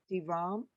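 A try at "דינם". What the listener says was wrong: D, it's a nun. Dinam. In our version, it is really strong at the end.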